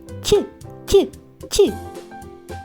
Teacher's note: кінчик язика опущений донизу а спинка язика вигнута круглою гіркою і торкається альвеол